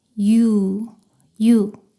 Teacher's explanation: 이로 시작해서 빠르게 우로 이어서 발음합니다.